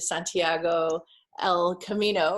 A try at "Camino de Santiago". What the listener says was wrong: Camino de Santiago, the other way around. Camino de Santiago.